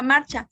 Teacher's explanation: Es una palabra grave, ya que su sílaba tónica es la penúltima.